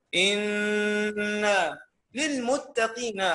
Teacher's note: نون حرف غنة مشدد بالفتح يغن بمقدار حركتين